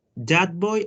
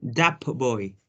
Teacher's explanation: so we have alveolar by bilabial